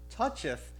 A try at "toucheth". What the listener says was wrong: he didn't say touches. He said tuffeth. He said tuffeth.